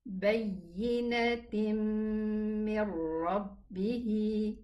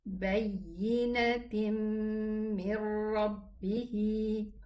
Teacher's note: The reason is the rule of tanween, the noon sukoon, meaning that there is a nun sukoon here, which is the tanween, and then came after it a meme, and this is idgham. And this is the sign of idgham with the letters of idgham except the waw and the ya.